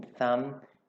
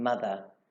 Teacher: although both of these sounds are fricative dental sounds, the TH in thumb is unvoiced and the TH in mother is voiced